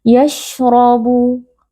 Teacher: Huruf shin memiliki sifat tafasyi, yaitu ada angin yang menyebar. Jadi kita menyebarkan angin di dalam mulut. Yashrabu. Huruf ra di sini dibaca dengan tafkhim atau dengan tebal karena huruf ra berharakat fathah, jadi kita membaca dengan mengangkat pangkal lidah.